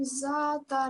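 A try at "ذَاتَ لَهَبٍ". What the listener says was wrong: This is the soft letter, Zata. Remember what I said? Make it look like you're about to bite your tongue and then say it. Zal.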